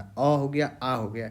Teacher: तो जैसे कि अ हो गया, आ हो गया, बोलिए अ बोलिएगा या फिर आ बोलिएगा, अ बोलिए या आ बोलिए, देखिए कहाँ से आ रहा है, कंठ में अ बोलने के लिए किसी जीभ, दांत, तालु, मुद्रा का यूज नहीं हो रहा है, बल्कि कहाँ से, ये अपने आप ये कंठ से आ रहा है, अ हो गया, आ हो गया। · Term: कंठस्य वर्ग